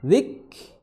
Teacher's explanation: Huruf kaf memiliki sifat hams, dikeluarkan nafasnya